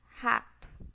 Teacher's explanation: Tanto no dialeto mineiro quanto no dialeto paulistano, nós usamos a fricativa glotal, rato. A gente não usa o R fraco, né?